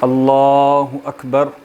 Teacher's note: آپ جو ہے وہ لام کو موٹا کریں گے